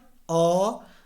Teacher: हमारा जीभ जो है अ कहने वक्त थोड़ा सा बैक की तरफ जा रहा है। ऐसा महसूस हो रहा है कि हमारा जीभ का मध्य भाग जो है थोड़ा सा काम कर रहा है, तो इसका उच्चारण स्थान जो है मध्य अ हो गया। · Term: मध्य स्वर